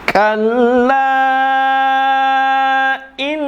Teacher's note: La in di situ adalah gunnah musyaddadah, ditekan.